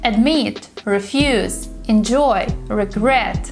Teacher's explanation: when we have the verbs with two syllables like admit refuse enjoy regret you should be able to hear the stress on the second syllable